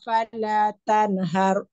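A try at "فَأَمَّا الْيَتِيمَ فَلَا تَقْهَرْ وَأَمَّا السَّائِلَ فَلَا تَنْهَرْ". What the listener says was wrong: falanya kurang falatan kurang panjang Bu falanya.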